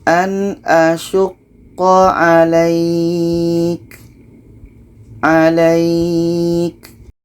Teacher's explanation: Ada yang mati sebelumnya baris atas, setelahnya ada huruf yang dimatikan, letaknya pada akhir bacaan ini mad lain. Kita panjangkan minimum dua harakat baru matikan ka-nya. · Kita panjangkan minimum 2 harkat baru matikan ka-nya. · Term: mat lain